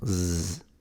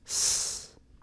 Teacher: in northern Italy, one of the characteristics of the S in between two vowels is that it tends to be pronounced like a Z. So they render it as a Z.